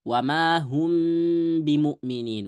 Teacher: mim sukun itu keluarnya dari dua bibir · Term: ikhfa syafawi